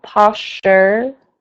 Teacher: the STU in the middle of the word blends together as much as you can, but don't lose the R on the end of the word